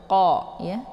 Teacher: Kemudian qa ini dibaca tebal ya. Qa ini posisinya di pangkal lidah dekat dengan anak tekak. Jadi saat melafadzkan huruf qa ini, yaitu pangkal lidah tersentuh dengan langit yang lunak.